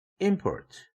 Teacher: 스트레스 액센트가 임이라는 음절에 붙는 동시에 피치 액센트도 폴트에 비해서 임이 높아지죠